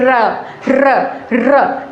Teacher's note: लुंठित या प्रकंपित। प्रकंपित का मतलब जब हम इसको बोलेंगे तो हमारी जो जीवा है वो कंपन करेगी